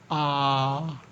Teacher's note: विवृत स्वर के वे स्वर हैं जिनके उच्चारण में मुख द्वार पूरा खुलता है